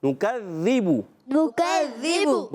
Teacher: وَكُنَّا نُكَذِّبُ میں نون پر پیش، کاف باریک اور نُكَذِّبُ کاف کو ذال سے ملائیں گے. ذال مشدد ذرا رک کر ادا کریں گے. با پر پیش کی حرکتیں ہونٹ گول ہو جائیں گے.